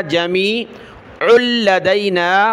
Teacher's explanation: عین کو لام کے ساتھ ملایا